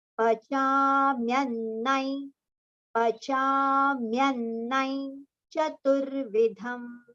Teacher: both the nas should be heard. So half na will go with mya. So myannai.